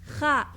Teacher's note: From the upper throat emerges the letter kha. If you know Spanish, it's the jota sound in the word jabón.